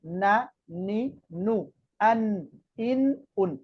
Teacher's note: নুনের মধ্যে একটা অন্যতম একটা বৈশিষ্ট্য হচ্ছে নুনটা বলতে একটু নাকের মধ্যে যাবে নুনটা বলতে কি যাবে নাকের মধ্যে যাবে এবং নুন উচ্চারণের সময়